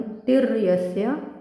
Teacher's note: पुढे जोडाक्षर तिर, तीवर आघात येऊन तिर्यस्य